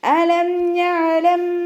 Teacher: ഐനിനും half സുക്കൂന് കൊടുക്കുക കേട്ടോ. കൽക്കലയുടെ letter അല്ലല്ലോ, അപ്പോൾ ഹാഫ് സുക്കൂന് കൊടുക്കുക.